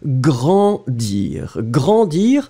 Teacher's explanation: So a and together, it goes in the nose. So it means that I don't hear any N, and everything is going in the nose. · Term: nasal